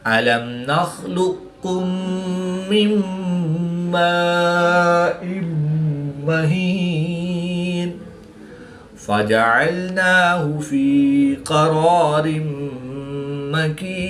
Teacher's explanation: زیر کی تنوین کے بعد میم حروف الملون میں سے ہے تو یہاں پر بھی ادغام مع الغنہ ہوگا، یعنی غنہ کر کے پڑھیں گے